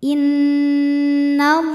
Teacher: Inna, ada hukum gunnah musyaddadah karena nunnya bertasydid. Cara bacanya dengung, bunyi n tahan sampai ada suara masuk hidung kurang lebih 2 harokat.